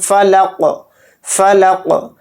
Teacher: last میں جو میری آواز ٹکرا رہی ہے اسی کو قلقلہ بولتے ہیں